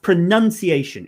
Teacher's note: It's a in the middle, even though the verb is pronounce, so it's ow.